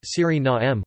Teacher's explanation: with the main stress on the third syllable and a schwa terminal vowel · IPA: [ˌsyriˈnaːmə]